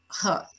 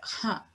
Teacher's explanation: So if you, instead of producing that sound here, you produce it forward, but sort of halfway there, so halfway along the roof of the mouth, it's going to be a mid-dorsum palatal stop